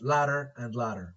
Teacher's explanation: it is produced by the tongue tip tapping making contact with the alveolar ridge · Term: flap